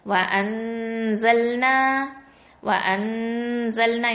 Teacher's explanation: நூனை மறைக்கிறோம், நூன் சாக்கினாவா மறைச்சு ஓதுறோம், இஹ்ஃபா பண்றோம்